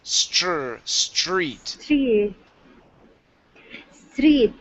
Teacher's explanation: you're going to go to an S then a CH